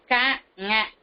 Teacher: அப்ப அந்த இடத்தில் இருக்கின்ற அன்னத்தின் அடிப்பகுதியை பொருந்துவதால் பிறக்கிறது. நாவின் முதற் பகுதி அன்னத்தின் அடிப்பகுதியை பொருந்துவதால்